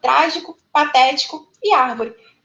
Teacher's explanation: sílaba tônica é a antepenúltima proparoxítona